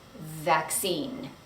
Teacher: you're going to put your teeth on top of your bottom lip, and then there should be some vibration that happens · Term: V sound